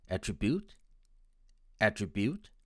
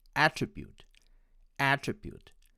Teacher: my friends from india tend to pronounce it as attribute attribute with the stress on the third syllable and my american friends will pronounce it as attribute attribute with the stress on the first syllable